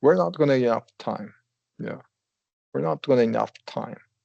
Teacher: falling intonation is the most common pattern because it's just regular statements